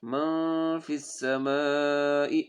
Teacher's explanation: مد 4 سے 5 الف کے برابر اس کو ہم کھینچیں گے